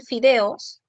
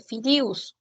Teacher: alternancia vocálica entre la vocal e y la vocal i. O la vocal o con la vocal u.